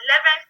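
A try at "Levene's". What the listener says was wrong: Can you pronounce it Levin, not Leven?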